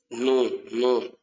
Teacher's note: That tip of the tongue falls within the two upper central incisors.